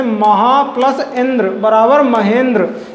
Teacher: इसमें प्रथम अक्षर का अंतिम वर्ण आ उच्चारण हो रहा है और दूसरे वर्ण का प्रथम वर्ण ई है। तो आ प्लस ई मिलके ए का निर्माण कर रहे हैं।